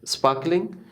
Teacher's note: Sparkling का R नहीं पढ़ेंगे, क्यों? R के बाद K है, K is consonant, नहीं पढ़ते.